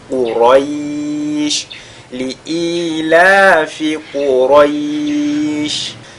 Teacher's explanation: ce qu'il faudra éviter, c'est de faire... de lire ce ra comme s'il y avait le son E.